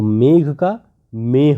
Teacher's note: दो स्वरों के बीच में आने वाले महाप्राण स्पर्श व्यंजन ह में बदल जाते हैं